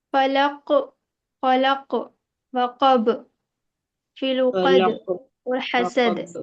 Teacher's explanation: ये सभी जगह आयत करने पर कलकला हो रहा है